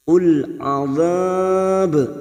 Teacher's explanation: dibaca wakaf mat arid li sukun. 4 harokat kita panjangkan. Lalu ujungnya jangan lupa dipantulkan karena ada huruf ba yang mati di akhir kalimat dan dibaca wakaf.